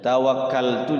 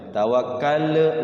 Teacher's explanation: cuman ada lam sukun ya, enggak boleh mantul lamnya